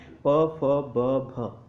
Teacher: हमारे होठ जो है आपस में स्पर्श करते हैं और वायु को फिर बाहर फेंकते हैं। ठीक है, वायु वहाँ से रगड़ खाकर बाहर निकल जाती है, प। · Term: ओष्ठ व्यंजन